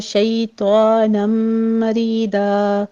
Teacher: را کو باریک پڑھتے ہوئے یا مد ادا کریں گے ، آخر پہ وقف ابدال کر لینا ہے،